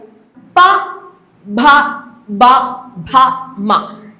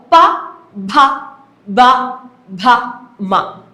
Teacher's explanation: ഞാൻ ആ അക്ഷരങ്ങളെ ഉച്ചരിക്കുന്ന സമയത്ത് ആ മേൽചുണ്ടും കീഴ്ചുണ്ടും മാത്രമല്ലേ എനിക്ക് ആവശ്യമായിട്ട് വന്നുള്ളൂ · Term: ഓഷ്ട്യം